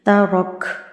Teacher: وقف کریں گے تو کاف جو ہے یہ جزم میں تبدیل ہو جائے گی